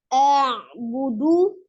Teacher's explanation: A'budu ain sukun. Ya, sifat ain adalah tawassut atau bainiyah ya. Jangan dipatahkan seperti huruf hamzah a. Jangan juga dengan manjangkan alifnya menambah mat ya, juga tidak boleh karena kemarin kita sudah belajar tidak boleh lahan ya.